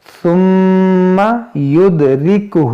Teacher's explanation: دیکھیں میم مشدد ہے، اس میں غنہ کریں گے